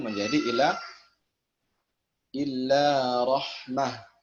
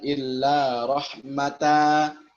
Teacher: Misalnya illa rahmatan mir rabbik, surah Al-Isra ayat 87, ketika waqaf pada lafaz rahmah yang mana fathah tanwin, ya, rahmatan, yang mana fathah tanwin tidak diganti dengan alif atau tidak diibdalkan dengan alif, akan tetapi dengan ha tanpa tanwin. Kalau kita wakaf pada illa rahmatan menjadi illa rahmah, bukan illa rahmata, bukan.